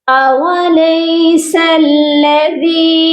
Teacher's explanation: اولیس الذی، سین کو لام مشدد کے ساتھ ملا کر پڑھا جائے گا اور ذال کو نرمی سے پڑھا جائے گا۔ زبان کی جو نوک ہے اوپر والے دانتوں کے کنارے سے سافٹلی ٹچ کر کے ذال کو ادا کیا جائے گا · ذال کو ایک الف کی مقدار لمبا بھی کر کے پڑھا جائے گا